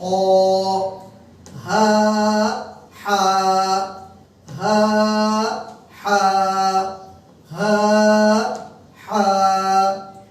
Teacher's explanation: কণ্ঠের মধ্যখানে চাপ দিয়ে শোষ আওয়াজ বের করে